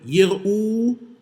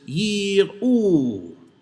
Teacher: that involves a distinction in the length of the vowel in the first syllable